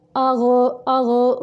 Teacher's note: गैन को कलकला नहीं करेंगे।